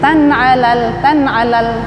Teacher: Jadi tan alal supaya tidak dengung, membacanya cepat. Kalau ditahan tan ala jadi dengung ya, bacanya cepat supaya tidak dengung. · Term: izhar khalqi